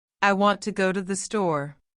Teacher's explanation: Even though the sentence has seven words, only three carry strong beats, the rest are reduced and flow around the rhythm. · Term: stress timed rhythm